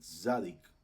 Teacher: La SADI. La SADI tiene el sonido como una TZ, ¿verdad? Entonces la pronunciamos así, como haciendo el zumbido de una abeja, por decirlo así.